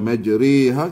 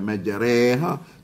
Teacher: Orang baca majriha, kita baca majreha. Tu orang panggil imalah Melayu ataupun imalah Tok Wan Hang.